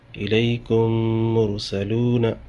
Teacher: ادغام شفوی، میم ساکن کے بعد اگر میم آئے تو میم کو میم میں ملا کے غنہ کے ساتھ پڑھیں گے